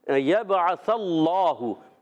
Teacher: یبعث اللہ، یا کو با سے ملائیں گے، با حرف قلقلہ میں سے قلقلہ ہوگا، آواز لوڈ کرائے گی، عین کی ادائیگی الگ کے درمیان والے حصے سے۔ یبعث اللہ، سا کا مخرج کلیئر رکھنا ہے، سا سیٹی سے ادا نہیں کریں گے، سا سین سے نہ پڑھیں، کہیں سین سے بدل جائے غلط ہو جائے گا۔